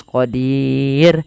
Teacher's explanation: Karena huruf ra-nya dimatikan dan sebelumnya ada huruf ya dan ada huruf kasrah. Maka dia harus tipis, qadir. Tidak boleh dibaca qadir. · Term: ra yang tipis